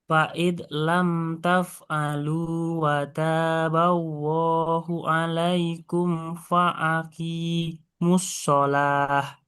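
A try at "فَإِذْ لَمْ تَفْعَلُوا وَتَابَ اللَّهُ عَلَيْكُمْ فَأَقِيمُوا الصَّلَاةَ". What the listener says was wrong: Masih sama nih Hamzah sama Ainnya. Fa'idh lam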